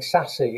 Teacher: because the name already contains these sibilant sounds then the child has also put sibilant sound right at the beginning of their name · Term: assimilation